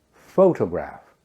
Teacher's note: in the word photograph the stress is on the first syllable